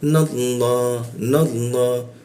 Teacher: Ketika huruf na bertemu Allah, maka lam bertasdidnya itu kita baca ke arah o dia. Tapi mulutnya tetap a ya, mulut bibirnya itu a dia. Tapi keluarnya o dia.